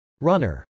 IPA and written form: rˈʌnɚ (runner)